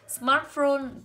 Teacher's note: ghép của hai từ với nhau cho âm rơi vào từ đầu